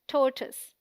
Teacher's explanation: TOR is the stressed syllable, rhyming with more. TOISE sounds like tuss, a short U sound.